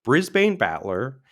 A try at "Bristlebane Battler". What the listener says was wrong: I also don't know why you're not saying Bristlebane instead. You're saying Brisbane.